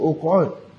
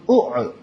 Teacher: Ain qaf tadi ni dia tukar jadi ain. Pasal makhraj bagi huruf qaf dengan ain ni dia terlalu hampir. Jadi dia berat nak sebut.